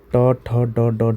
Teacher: ट वर्ग का मूर्धन्य से, ट ठ ड ड ढ, मतलब मूर्धन्य से मतलब मुड़ जाता है। हम जब जीभ हमारी मुड़ती है, जीभ हमारी ऐसे मुड़ती है और तब इनका उच्चारण होता है।